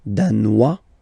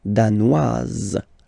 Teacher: Danois, don't pronounce the final S. Danoise, here you pronounce it.